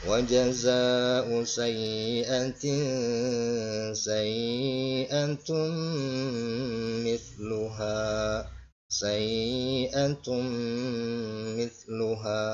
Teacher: Jadi agak dengung. Kemudian ha di sini mad tabi'i, ya, panjangnya 2 harokat. · tanwin di sini menghadapi huruf mim, ya, ini maka disebut dengan hukum bacaan idgham bi gunnah, ya, idgham bi gunnah, ya, bacanya dengung, ya. Wa jazaa'u sayyi'atin sayyi'atum misluha sayyi'atum misluha, gitu, ya.